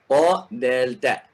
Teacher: ta, dal, ta keluar dari gusi gigi siri atas bersama dengan ujung lidah.